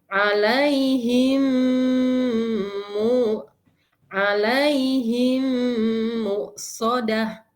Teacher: Him ya, masuk ke rongga hidung ya suaranya. Jangan lupa ditahan 3 harokat ya, jangan terburu-buru sehingga kurang dari 3 harokat ya. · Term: idgham mimi